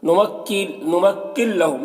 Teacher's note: नुमक्किल लहुम यहाँ पर नून साकिन के बाद लाम हुरूफ यरमलून में से तो इदगाम ताम होगा, नून को लाम से मिलाकर बगैर गुन्ना के पढ़ेंगे।